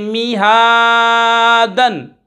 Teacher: यहाँ पर हा के ऊपर खड़ी हरकत है, खड़ा ज़बर है, खींच कर पढ़ेंगे मीहादन। और यहाँ ज़बर की तनवीन के बाद कहीं अलिफ कहीं या लिखा जाता है, हिज्जे करते वक्त इसका नाम नहीं लेंगे।